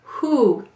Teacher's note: do you notice how your lips are forward